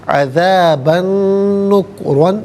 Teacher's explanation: عذاباً میں با پر دو زبر کی ترمین، اسے نکرن کی نون کے ساتھ ملائیں گے، نون کی آواز کو غنے کے ساتھ ادا کیا جائے گا